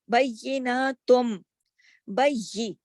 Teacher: وہاں لوگوں کو خود ہی یہ رول پتا ہوتا ہے کہ جہاں پہ نون ساکن کی آواز آئے گی اور اس کے بعد اگر با کا حرف آ جائے گا، جیسے بیناتم میں با آ گیا، تو یہاں نون ساکن کی جو آواز ہے نا تن، یہ جو تن ہے وہ نون جو ہے میم میں بدلے گا